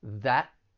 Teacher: tongue is going to be at the bottom of your mouth people may say it with a stop t that in which case the tongue is going to then be touching the top part of your mouth